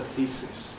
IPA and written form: ˈθiː(clipped)sɪs (thesis)